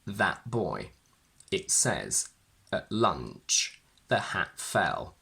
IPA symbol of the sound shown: ʔ